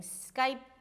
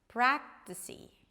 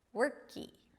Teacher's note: instead of saying skype, you may hear people saying 'skypee' - the very tiny 'ee' sound